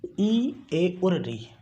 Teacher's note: इनका जो उच्चारण होता है उसमें जीभ का अगला भाग उठता है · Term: अग्रस्वर